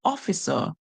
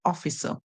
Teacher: Remember, the British would give the ER a schwa sound.